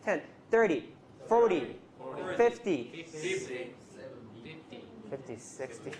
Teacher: 30 and 70 are always stressed on the first syllable